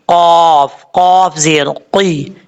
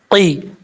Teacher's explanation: اس کا مخرج ہے زبان کی جڑ اوپر والے تالو کے نرم حصے سے لگے تو قاف پڑھا جاتا ہے، قاف، قاف زیر قی، اس طریقے سے، اس کو کی نہیں پڑھنا، قی۔